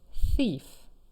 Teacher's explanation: the th in thief is unvoiced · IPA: θ